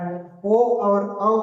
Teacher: ओ और औ का उच्चारण स्थान कंठ एवं ओष्ठ होता है।